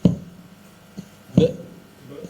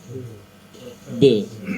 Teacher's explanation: Sedangkan di ayat Al-Lahab huruf terakhirnya adalah huruf ba. Jadi qalqalah huruf ba itu memantul. Namanya qalqalah itu memantul, bukan membentur.